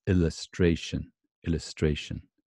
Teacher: Not an upside down V because it's not stressed. And then the upside down E is very unstressed. You can hardly hear it.